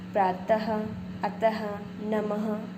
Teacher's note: जो 2 पॉइंट आगे लगे होते हैं, इसका उच्चारण ह जैसा होता, हल्के ह जैसा, ह भी बिल्कुल नहीं, ठीक है। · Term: विसर्ग